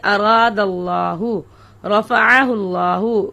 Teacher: لفظ اللہ کا جو لام ہے اس سے پہلے اگر زبر یا پیش والا حرف ہو تو اس کو پر کر کے پڑھیں گے، جیسے اراد اللہ، رفعہ اللہ، اس پر کرنے کو تفخیم کہتے ہیں۔